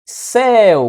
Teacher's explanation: Céu, começa no E, decresce para o U. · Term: ditongo ele é decrescente